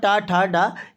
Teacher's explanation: टा वर्ग आपका मूर्धा से बोला जाता है। मूर्धा तालु और दांतों के ऊपर वाले हिस्से को मूर्धा कहते हैं।